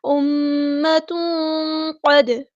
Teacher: دال ساکن پہ قلقلہ ہو رہا ہے · اس طرح ناک میں آواز گنگنی کر کے رکے گی